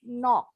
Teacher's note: Nah, O-nya boleh bulat seperti orang Inggris.